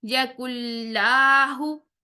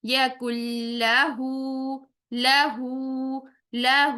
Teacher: लाम को लंबा नहीं करना और हा को लंबा करना है क्यों क्योंकि ये उल्टा पेश वव मद्दा के कायम मकाम है